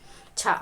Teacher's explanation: छ वर्ण तालव्य महाप्राण अघोष व्यंजन वर्ण का उदाहरण है